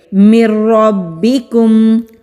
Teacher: ہم نون ساکن کی آواز کو چھپا دیں گے، یعنی کہ مدغم کر دیں گے، جذب کر دیں گے را میں اور میم میں، اس لیے نون کی آواز نہیں آئے گی۔ با کے اوپر بھی تشدید ہے، با کو بھی مضبوطی سے پڑھیں گے۔